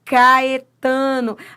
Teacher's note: o A se separa do E. Hiato